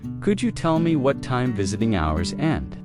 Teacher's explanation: In connected speech, could you becomes could ya.